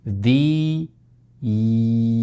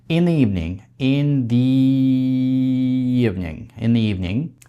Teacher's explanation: Следующий случай, когда у вас два гласных звука на стыке, это, например, в такой фразе, как «добрый вечер», in the evening. У вас получается the, первый звук и evening тоже на и, там два одинаковых звука. Между ними будем ставить и краткий.